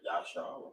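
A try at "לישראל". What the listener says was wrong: It's not Yah. It's La. It's La Yashala,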